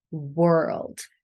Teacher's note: We start with the W sound, rounding the lips.